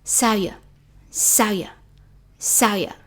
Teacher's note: So V like a Y sound. And also it's very weak.